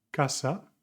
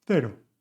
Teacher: It can either sound like, [SPA] «casa», with the sound /k/, or like, [SPA] «cero» with the sound /θ/.